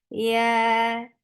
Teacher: you're lifting your tongue up, but you're not touching the palate. That's why this ya is very soft